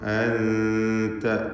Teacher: അൻത എന്നതിലെ സക്കിനത്ത നൂനിനെ ഇഖ്ഫാ ഹഖീഖി നൽകി മറച്ചു മണിക്കണം. ഇഖ്ഫായിൻ്റെ 15 അക്ഷരങ്ങളിൽ ആദ്യത്തേതായ ത ആണ് വന്നിട്ടുള്ളത് സാക്കിനത്താനൂന് ശേഷം.